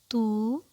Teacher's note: واو مدہ کی ادائیگی کے لیے زبان کی جڑ بلند ہوگی اور ہونٹ گول ہو جائیں گے